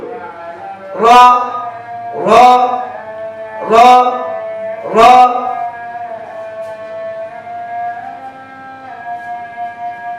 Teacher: র হরফটি পড়ার সময় আওয়াজ শক্ত হবে, মোটা হবে, নিচের দিকে দাবিতে হবে, বাতাস বন্ধ। · জিহ্বার আগার পিঠ বলতে নিচেরটা না, উপরেরটাই জিহ্বার আগার পিঠ। জিহ্বার আগার পিঠ তার বরাবর উপরে তালুর সঙ্গে লাগিয়ে র হরফটি উচ্চারিত হয়। মুখ স্বাভাবিক রাখবেন।